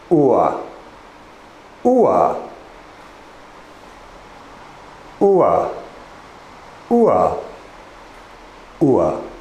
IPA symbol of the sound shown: ʊə